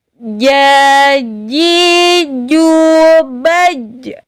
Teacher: Jim ini sifatnya yaitu syiddah. Dia tertekan dulu baru keluar.